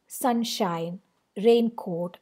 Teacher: this is an exceptional kind of foot in which you have two syllables both of them are stressed · this is an exceptional kind of foot in which you have 2 syllables, both of them are stressed, and it is usually seen in words like compound words like sunshine, raincoat, where both it's basically sunshine is a combination, it's a compounding of two words, sun and shine. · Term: spondy, spondi